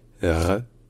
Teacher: un peu comme un r français mais roulé à l'arrière de la gorge un peu comme it Piaf